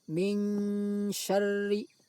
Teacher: suara nun sukun dibaca samar antara izhar dan idgham, lalu didengungkan. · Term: ikhfa